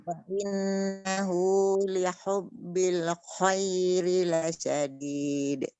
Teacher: Kha itu yang susah bagi saya. Karena huruf kho ini juga sifatnya mengalir dan mengeluarkan udara juga